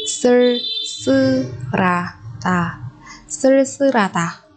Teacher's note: Ở đây sư và ha chúng ta biến âm thành sư và ra.